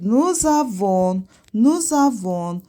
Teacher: S axırda tələffüz olunmur. Ondan sonra sait səslə başlayan söz gəldiyinə görə S hərfi tələffüz olunacaq, özü də Z-yə çevriləcək. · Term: liaison